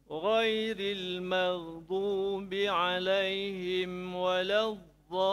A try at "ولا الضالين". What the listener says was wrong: لين كمان مشكلة كسرة. لين ما فيش لين. لين. تدرب عليها إن شاء الله الكسرة. مشكلة بالكسرة تميلها إلى الفتحة تميلها والكسرة تميلها.